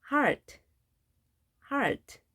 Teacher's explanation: 이중 모음이지만 A 발음합니다. 그리고 R 발음을 정확하게 해주셔야 됩니다.